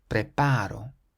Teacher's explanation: So because this word ends in a vowel, we stress the syllable before last, which is the a in the middle, preparo.